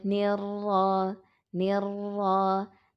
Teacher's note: kasrohnya tipis, rohnya tebal, tafkhim karena berharokat fathah.